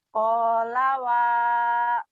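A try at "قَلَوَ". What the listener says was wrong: Koknya pendek ya ini.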